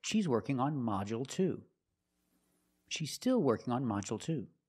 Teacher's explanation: with module the stress is on the first syllable so the second syllable is short